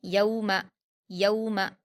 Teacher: या पर वाउलीन है, इसको मारूफ आवाज़ के साथ नर्म पढ़ेंगे